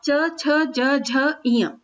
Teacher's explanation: इनका जब हम उच्चारण करें तो हमारे जो जीभ है हमारी तालू से लगती है, यानी मुंह की जो छत है उससे लगती है, इसलिए इनको हम तालव्य व्यंजन भी कहते हैं।